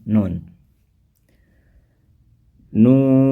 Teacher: mad lazim harfi mukhafaf ini dibaca panjang enam harakat